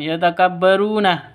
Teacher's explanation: Ru panjang dua ketukan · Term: mad thobi'i